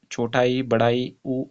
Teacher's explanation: संवृत स्वर जो होते हैं इसमें मुंह लगभग बंद रहता है